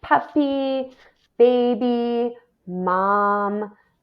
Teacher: a lot of these sounds are produced with the lips. So we would call those bilabial sounds